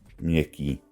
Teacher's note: the previous consonant is palatalized. In other words, it has a y quality to it